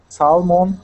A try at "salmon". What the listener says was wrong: Now this word here, we don't pronounce that that L. The word is salmon.